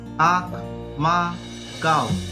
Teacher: यह चंद्र बिंदु है। अनुनासिक स्वरों के उच्चारण में मुंह से अधिक तथा नाक से बहुत कम सांस निकलती है।